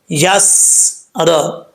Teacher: इज़ा यस्र, अब यहाँ पर सीन में कलकला नहीं करना, यस्र, कलकला करेंगे तो गलत हो जाएगा। सीन साकिन है तो इसको साकिन ही पढ़ना है, आवाज़ जम जाए, लेकिन सीटी की आवाज़ आनी चाहिए क्योंकि सीन में सीटी आती है